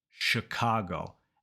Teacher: So in that first syllable, you're focusing on two things. The very first sound is sh, not ch.